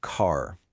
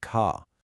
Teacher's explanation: In most of American English, you hear that hard R sound really clearly. But in a lot of British English, it gets dropped, sounding more like ka.